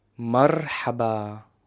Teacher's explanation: First, it's the letter Ra. It's a rolling R. So you have to roll your tongue to produce that letter, like the Spanish R.